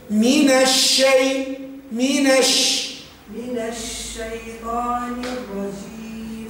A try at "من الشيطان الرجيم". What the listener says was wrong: فخم الطاء